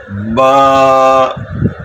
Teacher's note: با جو ہے یہ ہونٹوں کے تر حصہ جو ہے، اوپر اور نیچے کا جو ہونٹ ہے اس کا جو تر حصہ ہے وہاں سے ادا ہوتا ہے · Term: حروف شفویہ